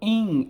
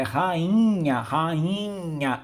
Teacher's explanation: é um I nasal, o som sai pelo nariz